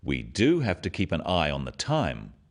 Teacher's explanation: Notice the emphasis on the word do